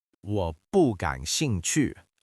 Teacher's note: Use the fourth tone on that 不, make it sound like a closing door.